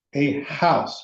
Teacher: So if it's not this unaspirated H, goes back to the normal rule, we use a. So a house, because house aspirates the H